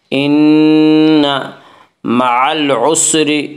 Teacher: را کے نیچے زیر ہے اس سے را کو باریک پڑھیں گے